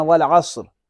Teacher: تو صرف لام کو پڑھتے ہیں، الف کو نہیں پڑھتے ہیں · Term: حروف قمری